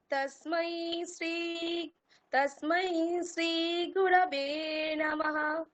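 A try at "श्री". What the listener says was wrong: এখানটা ভুল হয়ে গেল, শ্রী বলে দিলেন, ওটা তালব্য রয়েছে, যেহেতু শ্রী বলতে হবে।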